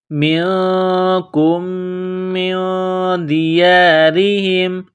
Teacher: نون ساکن کے بعد دال ہے، حروف اخفا ہے، نون ساکن پر غنہ کریں گے، آواز ناک میں چھپائیں گے